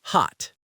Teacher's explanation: The British keep it round and short.